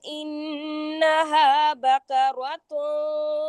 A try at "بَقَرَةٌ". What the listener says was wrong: بقرات، قاف موٹا کریں.